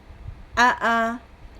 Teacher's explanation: huruf hamzah ini diucapkan dengan kuat karena suaranya tertahan, kemudian tidak ada hembusan nafas, suaranya tertahan. Jadi kita bacanya juga dengan suara tertahan.